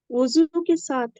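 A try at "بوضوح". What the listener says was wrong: वुजू के आगे हा भी आ रही है जनाब, वुजू, हाँ। तो बेवुजू हिन क्या है, वजह, वाव रूट वर्ड पे जाया करें, ठीक है। वाव द्वाद हा, वजह, वाजे, वाजे।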